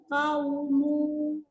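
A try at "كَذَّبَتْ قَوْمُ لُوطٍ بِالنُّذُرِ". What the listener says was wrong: Maunya pendek.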